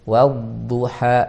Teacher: huruf dod itu ada sifat istitolahnya. Apa itu istitolah? Itu memanjang.